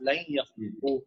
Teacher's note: ٹھیک ہے جی، تو لن یخلقو ملا کے جب پڑھیں گے تو یہ آپ کو پتا ہے نون ساکن کے قواعد ہیں. آگے جب یا آتا ہے یرملون میں سے تو ادغام ہو جاتا ہے غنہ کے ساتھ